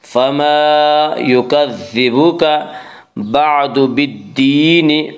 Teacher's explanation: الف مدہ کو 1 الف کے برابر کھینچ کر پڑھیں گے